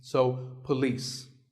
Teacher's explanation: This isn't police or polis. It's pa and lis with the stress on lis.